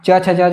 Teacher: जीभ जो हैं पूर्ण रूप से जो है तालु को छुएगी। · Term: स्पृष्ट प्रयत्न